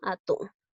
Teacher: La mayor fuerza de voz recae en la sílaba atún, por lo tanto es una palabra aguda